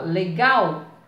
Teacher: Então, a sílaba mais forte é o gal.